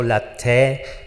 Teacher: on ne prononce pas vraiment la R à la fin